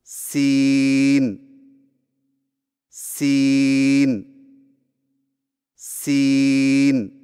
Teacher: سین کی ادائیگی میں زبان کی نوک کو سامنے والے نیچے کے دو دانتوں کے کناروں سے مضبوطی سے لگا کر باریک اور سیڑھی جیسی آواز میں پڑھیں، یعنی سین سین سین۔